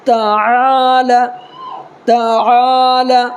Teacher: یہاں پہ عین نکال کر کے پڑھنا ہے